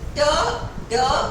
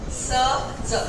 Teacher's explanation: जब तुमने ट और ड बोला ना, तो तुम्हारी जबान ने कहीं तो टच किया है, पर जब तुम स ज बोलते हो तब नहीं टच करता। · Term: एल्वियोलर